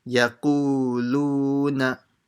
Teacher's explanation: Make sure you stretch both of them the same amount, the qu and the lu.